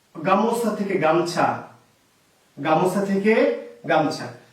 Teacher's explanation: নিশ্চয় আপনি একমত, স্বরটা লোপ পেয়েছে কোথা থেকে, মাঝখান থেকে। এর নাম মধ্য স্বরলোপ।